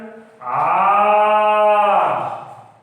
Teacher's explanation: इसमें इसके उच्चारण में ह्रस्व से तिगुना समय लगता है, 3 गुना समय लगता है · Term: प्लुत